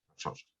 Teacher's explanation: the middle sh sound influenced the previous S and made them identical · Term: sibilant harmony